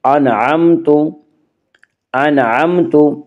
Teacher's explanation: انعمت، یعنی اس کو غنہ کے بغیر پڑھیں گے، غنہ نہیں کریں گے۔